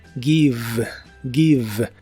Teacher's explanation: la V o B chica como la conozcas, en inglés es labiodental y vibrante